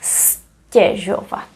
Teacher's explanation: Because of regressive assimilation. The T here affects the letter Z, which is voiced, and T is voiceless, so they become both voiceless.